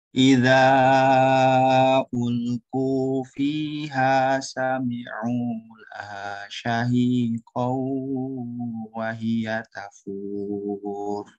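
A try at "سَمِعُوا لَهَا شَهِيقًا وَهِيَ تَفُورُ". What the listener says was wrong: Kunahnya kurang. Syahiqaw. Jadi ada pengaruh masuk kaisyum ya.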